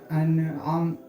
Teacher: आइन जो है दरमियानी हलक से हम अदा करेंगे, अन आम, अम नहीं कहेंगे।